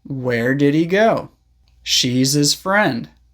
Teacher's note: When him, her, his, or hers comes after a consonant sound, we often don't pronounce the H clearly.